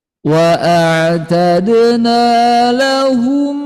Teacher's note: D-nya hati-hati dipantulin ada qalqalah